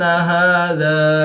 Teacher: الف سے پہلے زال پر زبر ہے تو الف مدہ، اس کو بھی ایک الف یعنی دو حرکات کے برابر ہی کھینچ کر پڑھیں گے